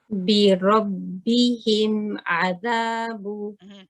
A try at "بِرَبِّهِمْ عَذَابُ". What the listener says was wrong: So the meme can be just a little bit longer. بِرَبِّهِمْ عَذَابُ. The other thing that you want to make sure here is the ba needs to be light.